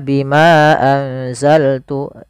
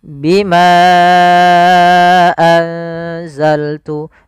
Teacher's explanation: Bimanya kita panjangkan sepanjang empat harakat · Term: Mad Jaiz munfasil